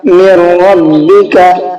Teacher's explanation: دیکھیے یہاں پر نون سائلنٹ ہے، اس کی وجہ یہی ہے کہ نون ساکن کے بعد میں را آ گیا، تو جب را آ گیا تو اس را میں کیا ہوگا، اب ادغام ہو جائے گا۔ یہاں پر نون کو سائلنٹ کر دیں گے اور میم کو ڈائریکٹ را میں ملا کر کے پڑھیں گے